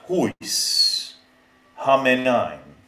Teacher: the ye in the beginning of a word sounds he instead of ye. So we have huis, hamenain.